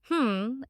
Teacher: The last sound is h. Keeping your mouth closed, you pronounce hm as if you are speaking through your nose.